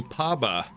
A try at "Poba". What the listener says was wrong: Seeing more P-O-B-A, but...